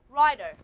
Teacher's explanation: I'm going to use a flap, then you have rider, just like Americans pronounce it, okay? So if you look at this, rider, this one is a flap.